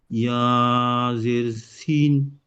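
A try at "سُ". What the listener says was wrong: জি ইয়াজের নয়, সিনের উপরে পেশ আর ইয়া নিচ্ছেন, সিন ইয়া পেশ, সুই।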